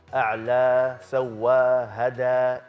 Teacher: setiap ayat terakhir ada huruf alif kan? A'la, sawa, hada, itu dua harakat. Usahakan stabilkan dua harakat aja.